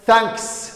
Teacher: saxda ah waa da da ahaan ayaad he u akhriyeysaa way th marka ay tahay unvoiced ee codkeedii aan lagu dhawaaqayn cod kala sameeyneyso dhawaaqu wuu isbedelayaa